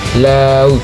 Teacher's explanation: lidah menempel ke gusi atas udara keluar di samping lidah.